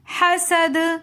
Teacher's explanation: اور وقفاً کے بعد جب ہم پڑھیں گے حسد تو دال کے اوپر ہم نے قلقلہ کرنا ہے، کیونکہ دال حروف قلقلہ میں سے ہیں